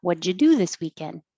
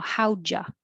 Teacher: the D and the Y make a ja, you changes to ya. So now how'd ya?